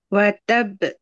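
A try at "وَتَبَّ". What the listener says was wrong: B tak. Watab. Buka. Buka pita suara hujung. Jangan b. Tab. Tabbat yada abi lahabin wa tab.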